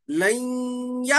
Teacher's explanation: लैया, ये लन या है नहीं, मगर क्या कर रहे हैं हम, ये जो नून है इसको या में क्या कर रहे हैं, मुशद्दद होने की वजह से लैया नहीं पढ़ के ये नून को, नून के बाद या आने की वजह से इसमें हम गुन्ना करके पढ़ रहे हैं